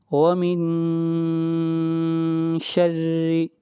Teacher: را کو باریک پڑھیں گے اس لیے کہ را کے نیچے کسرہ ہے، زیر ہے